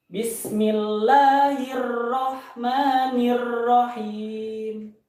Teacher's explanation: terlalu berlebihan menggetarkan huruf ro terlalu berlebihan